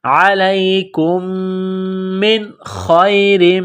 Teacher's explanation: خا جس طرح انسان گلے سے بلغم نکالتا ہے